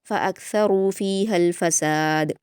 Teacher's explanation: इसमें ध्यान रखिए आप, फ़अक्सरू में रा पर वाव मद्दा है तो दो हरकत खींच कर पुर पढ़ेंगे। फ़ीहल फ़साद में दाल पर क़लक़ला करेंगे लास्ट में